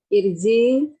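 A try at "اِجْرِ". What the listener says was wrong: Ketukar hurufnya itu jara, bukan jara yajri.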